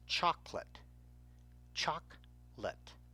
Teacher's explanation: The second O, even though there's only one consonant in between the two O's, does not help the first vowel sound long. Instead, the vowel has a short sound, and the second O has no sound.